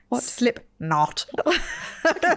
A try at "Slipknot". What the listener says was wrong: It's not two separate words.